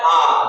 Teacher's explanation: आ में जो है वो हमारा पूरा मुंह खुलता है, इसलिए इसमें खुला स्वर आ जाएगा